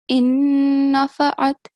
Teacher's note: So, first of all, in verse 10, in nafa'at, because noon is mushaddad, we make double sound, but it has to be for 2 seconds at least